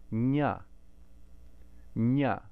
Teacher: the nasal sound and the palatal, we're using the top of the tongue still, not the tip, nya, nya. You can feel how that's different from nga.